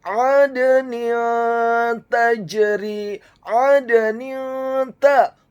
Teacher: Huruf nunnya dibaca tipis dengan harokat kasrah tanwin bertemu dengan huruf ta yang fathah. Hukum bacaannya adalah ikhfa, dibaca secara samar-samar. Kemudian kata tajri, huruf ta-nya dibaca tipis fathah 1 harokat.